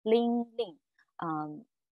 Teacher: the basic tones of cold in Hokkien, ling, so it's tone two, but the preceding, the first ling is changed to tone one. So it's ling ling.